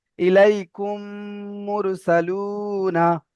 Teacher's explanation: এই মিমকে মিমের সাথে মিলিয়ে একালি পরিমাণ গুণা করে পড়তে হবে। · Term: ঈদগামে স্বাভাবিক